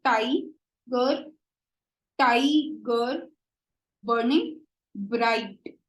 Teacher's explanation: each stressed syllable is followed by unstressed syllable